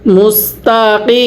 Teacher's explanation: ওয়াকফের সময় 3 আলিফ টানতে হবে